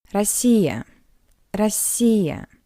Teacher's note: So, the unstressed O. In an unstressed position, the letter O read as a weak A